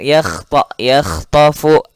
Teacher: hati-hati di kha, ini tidak boleh mantul juga, harus mengalir.